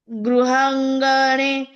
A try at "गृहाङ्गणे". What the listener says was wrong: भाभी एक मिनट, यहाँ पे गृहांग ने, गृहांग, ग पूरा उच्चारण करना है।